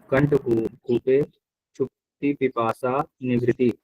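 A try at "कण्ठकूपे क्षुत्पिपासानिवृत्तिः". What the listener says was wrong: यहाँ शुक्ति नहीं है जी, ये हाँ, क्षुत पिपासा, हाँ, लास्ट में आपने इसको ई को ती के साथ भी जोड़ दिया, पी के साथ भी जोड़ दिया, शुक्ति भी बोल दिया, पिपासा बोल दिया, ये शुक्त पिपासा है, ठीक है।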